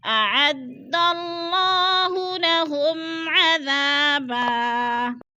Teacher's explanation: میم ساکن کے بعد عین حروف حلقی میں سے آ گیا ہے تو ادھر اظہار شفوی ہے، غنہ نہیں کریں گے